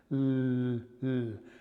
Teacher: it is dental because the tip of your tongue is right up against the back of your top front teeth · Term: lateral